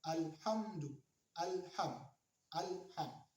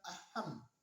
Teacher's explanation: Itu ada alif lam yang disebut dengan alif lam qamariyah, karena lam mati yang berada pada alif lam dibaca jelas atau kelihatan saat dibaca. Tidak mengatakan aham, tapi alham, jelas suara alif lam atau lam yang mati yang berada pada alif lam.